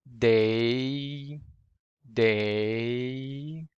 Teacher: And if you take a close look at that, first, your jaw moves up a little bit as you say this word, day, day.